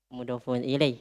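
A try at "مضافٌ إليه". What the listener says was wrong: Mudofun. Mati nun tuh. Masa mati NG bahasa Arab? Mudofun. Iya, bukan mudofung. Mudofun ilai. Mudofung ilai. Mudofun. Fun. Tanwin. Mudofun ilai.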